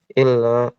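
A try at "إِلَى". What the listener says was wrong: Di situ ila, nggak ada tasydid, bukan illa ya. Artinya sangat berbeda kalau membaca illa.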